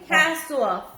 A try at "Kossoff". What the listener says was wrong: Kossoff. Kossoff. K-O-S. Kossoff. It's Kossoff with an O.